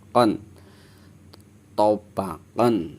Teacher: Ketika nun sukun atau tanwin bertemu dengan huruf ain, maka suara nun sukunnya atau tanwinnya dibaca jelas, terang